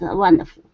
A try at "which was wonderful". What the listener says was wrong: First up, we have which was wonderful. Okay, instead of saying which was, okay, so take out that extra sound. Which was wonderful. Which was wonderful.